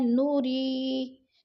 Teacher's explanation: نوری، یا ساکن سے پہلے رو کے نیچے زیر ہے تو ادھر یا مدہ ہے، یا مدہ کو بھی ہم نے ایک الف 2 حرکات کے برابر کھینچ کر پڑھنا ہے، لمبا کرنا ہے